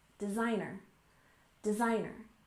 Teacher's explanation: with stress on the second syllable